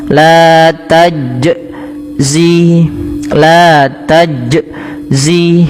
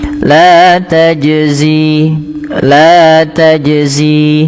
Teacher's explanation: Yang kedua ada bernapas dan dia berhenti dan menambah hamzah.